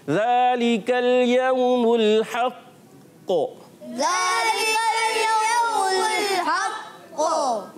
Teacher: क़लक़ला खूब जमाव के साथ होता है और आवाज़ फ़ौरन नहीं लौटती, थोड़ा ठहर कर लौटती है